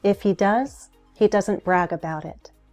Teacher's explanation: Fall rise, which can happen mid-sentence.